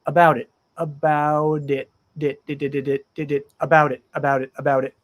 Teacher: the T connects to the i in it